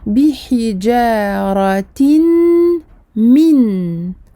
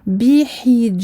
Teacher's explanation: Je ne dirai pas bi hijaratin min. Le noun du tanwin, donc le noun du in, va être aspiré, mangé par le mim mushaddada, par la shadda du mim. Bi hijaratim. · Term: idram bi runna